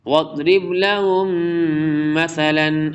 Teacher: میم ساکن اور پھر میم متحرک، میم کا میم میں ادغام ہوگا